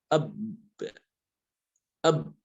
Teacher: Beda dengan ba. Kalau ba sifatnya apa? Syiddah ya, tertahan suara.